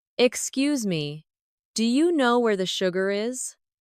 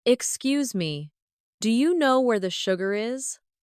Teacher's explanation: Notice how do you changes to dia?